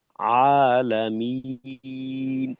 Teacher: যেমন ধরেন আপনি বললেন আলামিন, তো এখানে মিম এবং নুন, মিন, মি, মিমের জের উচ্চারণের সময় মি নাকে যাবে, সেরপর শেষে গিয়ে নুনে নাকে যাবে, মিম। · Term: নাকে যায়